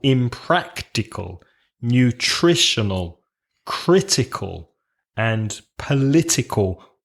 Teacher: impractical nutritional critical and political all have the stress three syllables from the end · all have the stress 3 syllables from the end